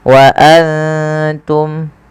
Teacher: Kemudian wa antum, ada nun sukun yang tidak berharokat bertemu ta. Kita baca dengan bacaan ikhfa, yaitu cara membacanya menyamarkan suara nunnya kepada huruf ta.